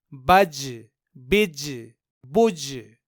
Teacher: یہاں ان تینوں جگہوں میں ہم نے حرف جیم میں قلقلہ کیا کیونکہ جیم حروف قلقلہ میں سے ہے اور یہاں جیم ساکن ہے۔